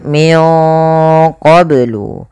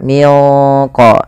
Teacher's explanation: caranya nunnya samarkan ke Q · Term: Ikhfa